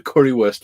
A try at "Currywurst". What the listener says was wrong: A little help with the pronunciation. So like a W in German is pronounced like as a V. So it's currywurst rather than worst.